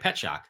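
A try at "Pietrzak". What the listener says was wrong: There's an R in there.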